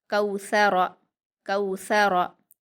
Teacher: काफ पर वाउलीन है, इसको हम नरम आवाज़ के साथ जल्दी पढ़ेंगे। सा पर हरकत है, इसको हम नरम आवाज़ के साथ जल्दी पढ़ेंगे।